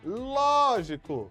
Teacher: Opa, a forte é ló.